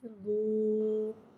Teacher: واو مدہ کو ایک الف یعنی 2 حرکات کے برابر کھینچ کے پڑھیں گے اور پیش کو ہونٹوں کی گلائی کے ساتھ ادا کر کے پڑھیں گے